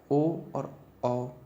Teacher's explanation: ओ और औ इन दोनों में होंठ गोल हो रहे हैं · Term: व्रतमुखी